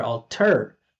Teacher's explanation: There's two T's. Alter, the first T is at the beginning of the stress syllable. So we make it obvious. We make it clear.